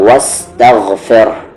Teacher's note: واستغفر، غین کا مخرج اپر تھروٹ، اوپر والا حلق جہاں سے خا نکلتا ہے